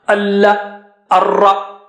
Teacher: for Lam and Ra, the merger is there, complete merger without Unna.